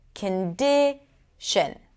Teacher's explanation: The middle syllable is longer, louder, and higher in pitch. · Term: primary stress